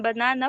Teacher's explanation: recognizing that the stress in banana falls on the second syllable.